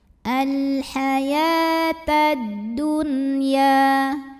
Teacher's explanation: Lalu alif lamnya disebut dengan alif lam syamsiyah karena alif lam menghadapi huruf syamsiyah yaitu huruf dal. Maka alif lam tidak perlu kita baca, lewat saja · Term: idgham syamsi